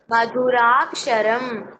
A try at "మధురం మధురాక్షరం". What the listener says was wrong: ఒత్తులు పలకాలి. మధురం మధురాక్షరం.